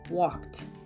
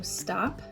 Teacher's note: end voiceless no sound with the last letter like walk voiceless it will also sound voiceless when we add the ed meaning it will have the T sound